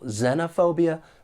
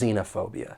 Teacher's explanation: Both are accepted. The only difference is that short E or long E in the first syllable.